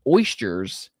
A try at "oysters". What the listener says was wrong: Are you saying oyster like moisture? Oyster. It's oyster.